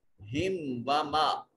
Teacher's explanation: میم ساکن کے بعد نہ با ہے نہ میم ہے، اس کے علاوہ ہے تو یہاں اظہار شفوی یعنی میم کو ظاہر کر کے پڑھیں گے